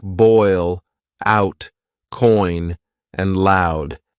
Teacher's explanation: these are complex vowel sounds that begin with one vowel sound and glide into another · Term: dip thongs